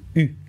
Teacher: Entre le I et le OU, un mouvement d'arrondi des lèvres fait apparaître le U.